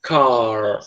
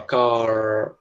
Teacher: O R está enrolando a tua língua, fica enrolada lá atrás. · Retroflexo, o R retroflexo é aquele R que a gente pronuncia com a língua na parte de trás da boca. É como se a gente estivesse puxando a língua.